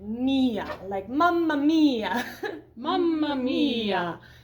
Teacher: it's that very closed forward sound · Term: E vowel